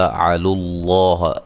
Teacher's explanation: لفظ اللہ کو موٹا ادا کریں گے، اس سے پہلے پیش ہے۔